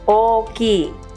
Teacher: The word for big has a double length o at the beginning.